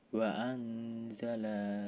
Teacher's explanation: ada hukuman ikhfa karena nun sukun bertemu huruf za